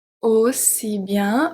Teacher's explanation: A-U make the sound of an open O, aussi.